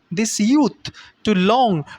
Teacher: We are putting accent once again on long.